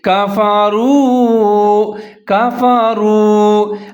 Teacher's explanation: سنیں والذین، والذین، آگے ہے کفروا، کاف کے اوپر زبر ہے، فا کے اوپر زبر ہے، را کے اوپر پیش ہے، واو ساکن ہے، را اور واو دونوں ملا کے پڑھیں گے، ہونٹ گول کریں گے، تھوڑا سا لمبا کر کے پڑھیں گے